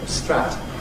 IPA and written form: strat (strut)